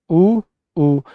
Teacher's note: उ ऊ जीभ के पीछे के हिस्से में कंपन होता है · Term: पश्च